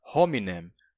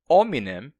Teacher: a pronúncia, por exemplo, da palavra hominem como ominem sem o h